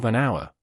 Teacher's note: an hour where the H is silent